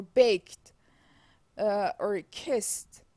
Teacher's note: So in the case of the English past tense suffix, the voicelessness of the final consonant in the verb spreads forward to the suffix in what we call progressive assimilation.